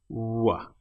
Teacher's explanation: The W sound, your lips are close but they're not actually touching. W. It's more like a soft vowel sound.